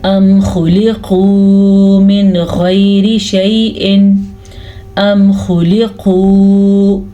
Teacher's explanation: ये ख्वा भी हरूफ मुस्तारिया में से है और काफ भी हरूफ मुस्तारिया में से है, तो दोनों को हम पुर पढ़ेंगे।